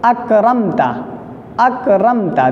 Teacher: نہ غنہ ہو رہا ہے نہ اخفا ہو رہا ہے، نہ آواز ناک میں چھپ رہی ہے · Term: اظہار شفوی